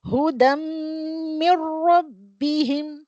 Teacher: अला हुदम, हुदा, अला हुदा, हुदम मिर रब्बिहिम, हुदम देखो तनवीन आई है, तनवीन के बाद मीम, तो यहाँ पे गुन्ना होता है, अकमल गुन्ना होता है, यहाँ पे 2 काउंट्स में गुन्ने के साथ खींच के पढ़ना चाहिए। यहाँ पे नो इदगाम, मिर रब्बिहिम, रो heavy letter, okay, no इदगाम, clean and clear पढ़ना चाहिए।